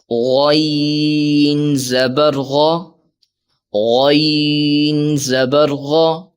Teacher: غین حروف مصالیہ میں سے ہے اس لیے ہم اسے موٹا کر کے پڑھیں گے